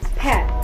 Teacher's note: When saying pet, notice how the tongue is positioned towards the front of the mouth while lips remain relaxed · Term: front vowel sound